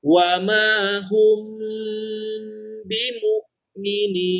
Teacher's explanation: ditahan tapi bentuk penahanannya itu seperti kita mengucap kata mi jadi kedua bibir bertemu